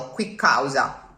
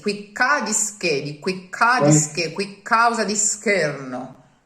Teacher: It's not a pause, it's just that the spare consonant that you will add to make the raddoppiamento fonosintattico connects the two words in such a way that it's not the quick causa, it's quick causa, as if it was one word with a double consonant in the middle